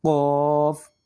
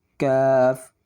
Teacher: یہ جو قوف نقطوں والا ہے اس کو موٹا کر کے پڑھنا ہے قوف، اور یہ جو بغیر نقطوں کے ہے اس کو پڑھنا ہے باریک کاف